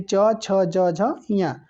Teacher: यानी क वर्ग का जो उच्चारण स्थान होता है वो कंठ से होता है, यानी क ख ग घ अंगा, इसी को हम लोग क वर्ग बोलते हैं, इसका उच्चारण स्थान कंठ से होता है। च वर्ग का उच्चारण स्थान जो होता है वो तालव्य होता है, तालु से होता है